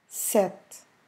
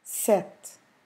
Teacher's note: we just stop almost in the consonant sound, in the T sound